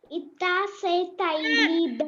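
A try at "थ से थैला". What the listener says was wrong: stop. Not itta. Dha. Ta. Dha. Not e. Don't say e.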